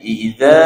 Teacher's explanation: Wal qamari idza, za di sini zal. Dia kena keluar lidah sikit.